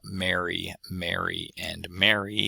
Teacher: There is in New York some extra post-vocalic R contrasts where most speakers of English don't have a difference. So whereas I have Mary, Mary, and Mary for all three of these words with no real distinction in the vowels, the proper name Mary versus being happy Mary versus getting married would have a bit of a vowel difference that the speakers of around New York can recognize.